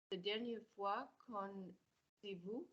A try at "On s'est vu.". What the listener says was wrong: I'm going to need vu, top lip, not vous. On s'est vu.